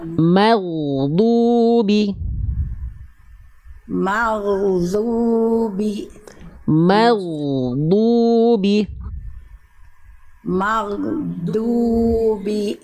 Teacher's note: Jadi Bunda rasakan huruf ghain itu dilafalkan dari ujung tenggorokan di sini.